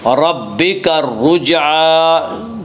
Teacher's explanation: جیم میں قلقلہ ہوگا، جیم حروف قلقلہ میں سے حروف قلقلہ 5 ہیں جن کا مجموعہ قطب و جد ہے، یعنی قاف طا با جیم دال، جب ان حروف کے اوپر جزم آئے تو ان کو پڑھتے وقت ان کے مخرج ٹکر کھا کر الگ ہو جاتے ہیں۔